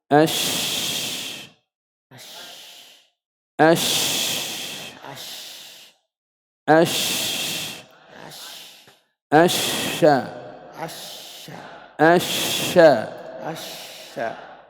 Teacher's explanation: التفشي هو انتشار صوت الشين من مخرجه الذي هو وسط اللسان حتى يصطدم صوت الشين بالصفحة الداخلية للأسنان العليا والسفلى